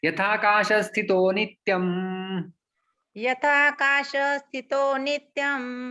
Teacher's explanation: आकाश स्थितः का जो विसर्ग है वो उ बन के फिर ओ बन जाता है